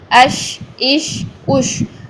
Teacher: आवाज़ को पूरे मुंह में फैलाना है, इससे हमारी शीन की साउंड पैदा होगी। शीन में आवाज़ भी जारी होती है, शीन में सांस भी जारी होता है